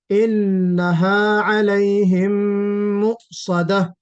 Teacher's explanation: اور انہا کے بعد تھوڑا سا آپ رک گئے ہیں. انہا کے بعد جو وقف کیا ہے تھوڑا سا سکتے کے انداز کا، وہ نہیں ہونا چاہیے